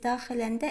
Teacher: Həmin şəkilçilərdən əvvəlinci hecaya düşüb. Yalnız daxiləndə birinci hecadadır vurğu.